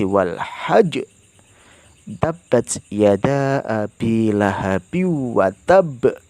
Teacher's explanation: Qalqalah akbar adalah apabila huruf qalqalah bertasydid berada di akhir kata dan diwaqafkan. Cara bacanya adalah ditahan untuk menyempurnakan tasydid lalu dipantulkan